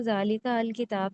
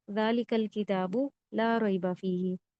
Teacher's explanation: ये वो हमजा होता है जो लिखने में आता है लेकिन दौराने कलाम पढ़ने में नहीं आता, और इसके ऊपर कोई हरकत भी लगी भी नहीं होती। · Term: हमजातुल वसल